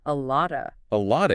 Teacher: It often disappears completely. And the O reduces to a schwa